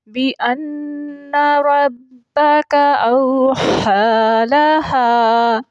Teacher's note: واو مدہ ہے، اس کو پڑھنے میں ایک الف کا وقت لگے گا۔ ہا، یہ جو ہا ہے یہ حرف ہلکی حروف میں سے ہے اور حلق کے درمیان والے حصے سے ادا ہوگی۔